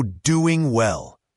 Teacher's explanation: for doing well, the G is often dropped